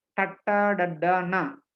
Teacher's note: the tongue touches the teeth while pronouncing these letters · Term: dentals